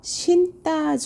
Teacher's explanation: 어음 용원의 어강 끝소리가 니은이 그다음에 예사 소리가 연달아 나왔기 때문에 뒤에 있는 예사 소리를 된소리로 발음해서 된소리되기